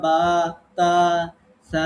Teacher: আমরা যখন হরফগুলো পড়ছি তখন আমরা বা, তা, সা একটু টেনে পড়ছি